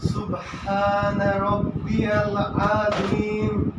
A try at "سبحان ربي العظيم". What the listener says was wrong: আইনটা একটু লম্বা হয়েছে, মানে আজিম। আজিম না হলে সোজা, সরাসরি সোজা আজিম।